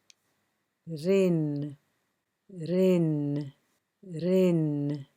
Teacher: Ra, I have a line here just to remind you that Ra can be heavy, but with the kasra it will always be light